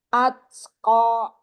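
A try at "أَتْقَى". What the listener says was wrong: Jangan diakhiri dengan hamzah, ko-nya, fathahnya.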